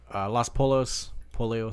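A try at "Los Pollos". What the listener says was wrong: Poyos. Use a Y in there. You sound like a Trumper when you say that. Los Polos Hermanos.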